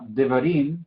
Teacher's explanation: Im es donde cae el énfasis, es la sílaba tónica. Var es la pretónica, porque es antes de la tónica